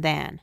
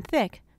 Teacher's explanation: the first voice sound is the sound it makes in then the the second sound unvoiced is the sound it makes in thick your mouth is in the same position for a vote both